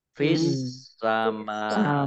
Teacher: Wala lam fathah alif matobi'i bis samai, alif lamnya alif lam syamsiyah karena tidak dibaca. Langsung masuk ke huruf berikutnya yaitu sin, ditandai sinnya ada tasdidnya.